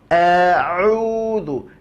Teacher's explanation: murnikan keluarnya dari tengah tenggorokan, maka ia tak akan masuk ke dalam hidung. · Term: huruf ain